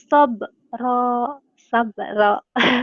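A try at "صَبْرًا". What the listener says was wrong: Sobro bener. Bunyi huruf. Huruf O ya, walaupun memang di Arab itu nggak ada O, tapi ini seperti ada O-nya, tebel ya, tabkhim gitu. Kanu afril alaina sabra.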